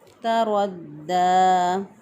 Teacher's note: را کے اوپر چونکہ زبر ہے تو را کو موٹا پڑھیں گے، را کے اوپر زبر ہو یا پیش ہو را کو موٹا پڑھتے ہیں، را کے نیچے زیر ہو تو باریک پڑھتے ہیں۔